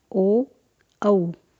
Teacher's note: सूत्र ओ दौतो हो कंठोष्ठम, यानी ओ एवं औ इन संयुक्त स्वरों का उच्चारण स्थान कंठोष्ठ है। इनके उच्चारण में कंठ तथा ओष्ठ दोनों का प्रयोग होता है, इसलिए इन वर्णों को कंठोष्ठ कहा जाता है।